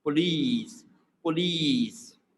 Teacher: So it's like bit of, we are stretching it, the second syllable, E, is bit of like E sound, a longer vowel sound